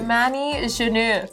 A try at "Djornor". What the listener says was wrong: Djornor. Djornor. Silent D. But for the purposes of most people that can't pronounce it, Djornor. Djornor.